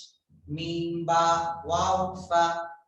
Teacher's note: Mim, ba, waw, fa are from the lips. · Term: लिप्स लेटर